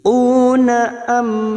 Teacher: mim sukun bertemu waw idhar safawi, dibaca jelas tanpa mendengung